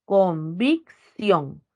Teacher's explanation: en la última sílaba está la mayor fuerza de voz